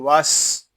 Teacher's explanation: سین یہ حروف صفیریہ میں سے ہے، اس کو ادا کرتے وقت سیٹی کی آواز آئے گی۔ وس، اس کو واف اس طرح نہیں پڑھیں گے، اس کو پڑھیں گے وس۔